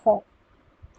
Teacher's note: যে সকল ধ্বনি উচ্চারিত হবার সময় স্বরতন্ত্রী কাছে আসার ফলে আমাদের শ্বাসবায়ুটা কি হয়, বাধাপ্রাপ্ত হয়, সেটাকে কণ্ঠনালীয় ব্যঞ্জন বলে। এক্ষেত্রে কণ্ঠনালীয় ব্যঞ্জন একটাই হয়, সেটা হচ্ছে হ।